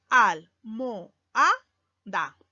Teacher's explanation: O, vocal abierta, A, vocal abierta, y se van a separar. Y el silabeo sería así: al, mo, a, da. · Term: hiato simple